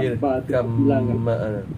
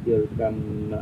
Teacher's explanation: Ada idgham mutajanisain ni kita buang huruf yang pertama.